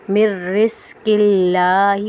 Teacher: لفظ اللہ کے نام کو ہم باریک پڑھیں گے کیونکہ لفظ اللہ کے نام سے پہلے حرف کے نیچے زیر ہے